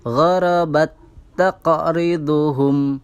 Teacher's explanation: Di situ kita dapati huruf ta yang pertama berharokat sukun, kemudian huruf ta yang kedua berharokat fathah. Maka cara membacanya dengan mentasydidkan, menghilangkan huruf ta yang sukun, kemudian memberikan harokat tasydid pada huruf ta yang kedua. Maka hukum bacaan ini juga dinamakan idgham mutamatsilain.